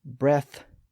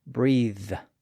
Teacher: So when we compare the noun and verb forms of these old words, we see the same distinction that we saw earlier. The nouns end in a voiceless TH sound, and the verbs end in a voiced TH sound.